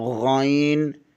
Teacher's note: حلق کے اوپر والے حصے سے ادا ہوتا ہے